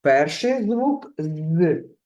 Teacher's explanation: перший звук з твердий приголосний позначаємо однією рисочкою